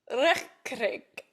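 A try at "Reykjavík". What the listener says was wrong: No, like roll your R's. Reykjavik. If you want to sound like you know what you're doing when you're speaking a Nordic language, always just put the emphasis on the first syllable. Reykjavik.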